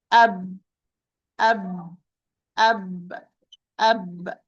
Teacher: So the B is articulated by sealing the lips or closing the lips. No space in between.